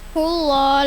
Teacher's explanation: Hullah lam jalala tafim. Lafaz Allah didahului doma tebal bacanya. Hul a izhar qamariah.